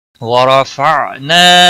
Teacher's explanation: را کو زبر کی وجہ سے موٹا پڑا جائے گا